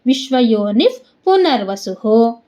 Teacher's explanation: ನೀ ಆದ್ಮೇಲೆ ವಿಸರ್ಗ ಇದೆ, ವಿಸರ್ಗದ ಮುಂದೆ ಪು ಇದೆ, ಅದಕ್ಕೆ ಅರ್ಧ ಫ. ವಿಶ್ವಯೋನಿಫ್ ಪುನರ್ವಸುಹು, ಸು ಮುಂದೆ ವಿಸರ್ಗ ಇದೆ, ಅದಕ್ಕೆ ಹು ವಸ್ ಸು ಹು.